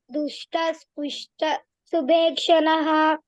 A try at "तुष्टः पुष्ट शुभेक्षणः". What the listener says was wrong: It is not dushta, it is tushta. Tushta pushta shubhekshanah.